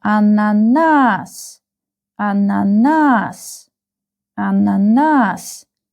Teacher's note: the last uh syllable is stressed